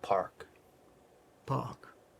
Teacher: we're making the shape of the r but you don't have to even hit that R sound